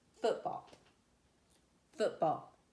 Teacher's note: then spondee is stressed stressed